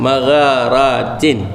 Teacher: Au magharat maghar jangan bagi keras sangat, lembut sikit. Magharatin tin pun jangan bagi tebal sangat, tin ujung lidah